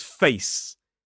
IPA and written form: feɪs (face)